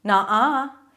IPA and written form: nɑ: a: (nuh-uh)